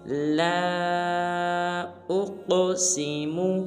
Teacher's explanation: لام کے اوپر مد ہے لہٰذا لام کو 3 الف مقدار لمبا کریں گے